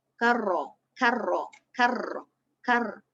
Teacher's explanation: Satu kali getaran saja. Bergetar hujung lidah apabila kita bunyikan huruf ra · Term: takrir